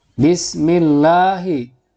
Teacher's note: di sini ada lafaz Allah atau lam jalalah yang didahului oleh kasroh. Ini nama hukumnya adalah tarqiq atau tipis.